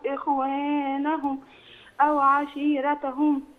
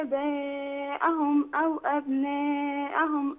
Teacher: آباءهم فيها مد، أبناءهم فيها مد، أما إخوانهم ما فيهاش مد ولا عشيرتهم